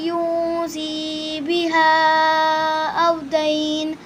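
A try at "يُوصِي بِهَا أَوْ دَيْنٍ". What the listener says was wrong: आपने यहाँ मुझे लगा जैसे आपने यूं पढ़ा, यूं नहीं बेटे, यू पर आवाज़ नाक में ना जाए।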